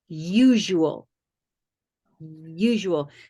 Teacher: it would be an invisible Y at the beginning of this word usual